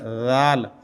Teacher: زال آپ کی زبان تھوڑی سی باہر نکل کے دانتوں کی نوک کے ساتھ لگے تو بڑھے گا زال، تو یہ تھوڑا باریک ہوتا ہے۔